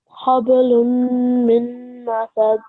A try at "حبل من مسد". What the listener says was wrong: Mim masad. So not lun and not min. make sure that you make the nasal sound, but the sound of noon won't be clear. So it's not hablun, it's hablum mim masad.